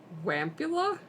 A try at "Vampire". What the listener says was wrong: Vampire. Like vampire. So your W would pronounce as V.